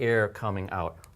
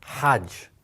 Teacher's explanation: So this is called a hard or an aspirated H sound.